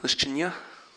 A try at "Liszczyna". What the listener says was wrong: Liszczyna. There's no ya at the end.